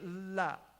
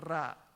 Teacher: And then lam and ra are related. They're from the same makhraj.